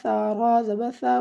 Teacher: را کو آپ نے پر پڑھنا ہے کیونکہ را سے پہلے حرف کے اوپر زبر آ رہی ہے